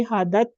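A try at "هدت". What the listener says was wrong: حادت نہیں ہے، حادت، حدت زبر پڑھنی ہے. حدت زبر ہاں کرتے ہیں تو وہ الف بن جاتا ہے. ٹھیک ہے، زادت زادت میں الف آتا ہے، اس میں نہیں آتا.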